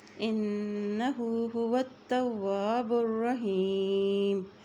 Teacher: را کے اوپر شد ہونے کی وجہ سے با کا پیش کو ہم را کے ساتھ ملا کے پڑھیں گے۔